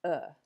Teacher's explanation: It's represented by an upside down E, and it sounds like uh. It's made in the throat with a relaxed mouth. So lips, teeth, tongue, jaw are all relaxed. And it's kind of the sound you might make if somebody punched you in the stomach. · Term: schwa